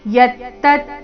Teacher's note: ಅಫಲಪ್ರೇಪ್ಸುನಾ ಕರ್ಮ ಯತ್ತತ್, ಯತ್ತ ಯ ಮೇಲೆ ಸ್ವಾಭಾವಿಕವಾಗಿ ಆಘಾತ, ಯತ್ತ ಆದ ನಂತರ ಅರ್ಧತ